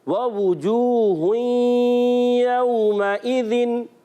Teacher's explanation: वाव साकिन से पहले पेश वाव मद्दा, एक अलिफ खींच कर अदा करेंगे